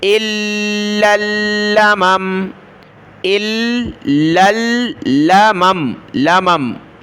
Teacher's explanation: حمزہ لام زیر ال، لام لام زبر لل، لام زبر لا، الا، میم زبر ما، میم زبر ما، ماما، الا لمما، لمما لمما. جب رکیں گے تو آخری میم پر سکون آ جائے گا